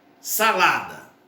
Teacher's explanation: salada, sílaba tônica, lá, penúltima sílaba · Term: paroxítona